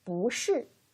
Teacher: if we put the last tone, just like 是 after 不, then we have to change the tone of 不. We change it to 不, the second tone. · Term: tone change rule